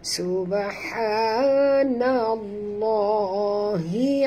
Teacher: Ya, lam di tengah-tengah, lam pada lafaz jalalah dibaca tebal kerana nun berbaris di atas